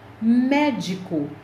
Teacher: Médico, a sílaba tônica é me.